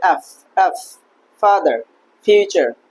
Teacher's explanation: উপরের দাঁত এবং নিচের ঠট মিলে হবে এফ